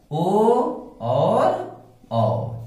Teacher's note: कंठोष्ठम कंठ और ओठ, यानी ओ दैतो का मतलब ओ और औ। इसका उच्चारण स्थान क्या क्या है? कंठ और ओष्ठ, इसलिए इन्हें कंठोष्ठम कहा गया है।